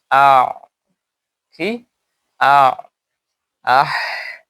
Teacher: হা আর আইন উচ্চারিত হয় অসতে হল্ক, গলার মধ্যখান থেকে।